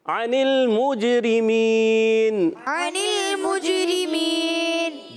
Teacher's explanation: جیم حرف قلقلہ میں سے آواز لوٹ کر آئے گی، مگر موج پڑھنا ہے، مجھ، یہ چے جیسی آواز نہیں آنی، آپ نے یہ خیال رکھنا ہے۔